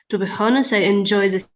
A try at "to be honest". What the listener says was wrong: Yeah, to be honest, you don't pronounce the H. To be honest, I enjoy.